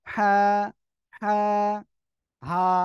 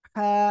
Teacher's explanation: আর এই হা টা উচ্চারণ হবে হা হা এরকম না হা গলাটা চেপে মুখ দিয়ে হালকা বাতাস বের হবে বের হয়ে উচ্চারণ করতে হবে